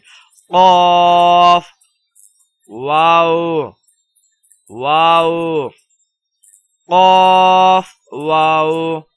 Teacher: قلقلہ کریں گے اور آواز کو موٹا کر کے پڑھیں گے